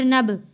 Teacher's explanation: غنہ نہیں کیا۔ حمزہ ذال زبر از، نون با زبر نب، با ساکن ہے یعنی کہ حروف قلقلہ ہے، اس لیے ہم نے حروف قلقلہ پہ قلقلہ ادا کیا ہے،